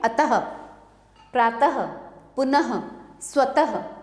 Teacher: अह इसे विसर्ग कहते हैं इसे ह की तरह बोला जाता है